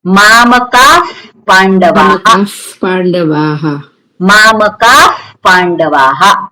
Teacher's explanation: વિસર્ગ પછી પકાર કે ફકાર હોય તો વિસર્ગનું કેવું ઉચ્ચારણ કરવાનું? ફકાર.